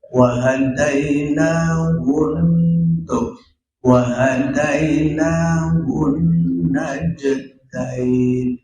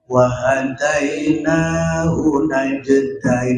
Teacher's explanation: Hunnahnya 2 harakat, artinya kita hunahkan wa hadainahun wa hadainahun najdain. Hunnya itu agak lama, 2 harakat. Gak boleh kita cepat-cepat begini wa hadainahu najdain, gak boleh ya, gak boleh, harus ada gunnah.